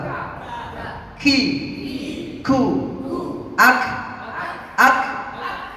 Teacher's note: K ini pangkal lidah yang agak ke depan mengenai langit-langit.